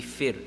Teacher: that ra, is going to be pronounced empty mouth, right? There's sukoon and the letter before has a kasra.